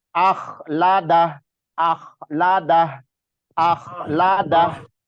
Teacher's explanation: Terus akhnya ini kho bukan ha. Terus harus agak ada kasar sedikit suaranya.